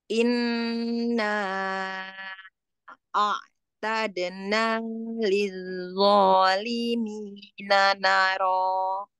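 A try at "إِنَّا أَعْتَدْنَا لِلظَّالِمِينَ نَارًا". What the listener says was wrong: Naro, na dengan ro sama panjangnya ya. Ulangi, Mi.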